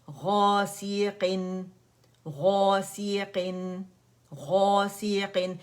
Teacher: جب موٹا لیٹر آتا ہے نا الف کے ساتھ، اسے اسٹریچ کرتا ہے تو پہلے درجے کی تفخیم ہوتی ہے، موٹائی ہوتی ہے، تو اس وجہ سے ہم نے اسے غا موٹا پڑھنا ہے، ٹھیک ہے، غا نہیں پڑھنا.